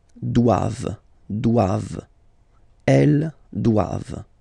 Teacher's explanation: classic ending for the plural form, E-N-T here. Okay, but then you don't pronounce it.